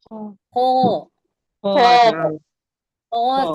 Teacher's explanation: हलक के इब्तिदाई यानी शुरुआती हिस्से से अदा होता है खो